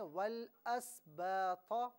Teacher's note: سین بالکل ساکن ہے، تو اسے بالکل بھی حرکت نہ دیں